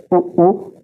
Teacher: हमारे जो होठ है वो क्या करे, वृत्त बनाए, एक गोला आकार बनाए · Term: वृत्तमुखी वर्तुल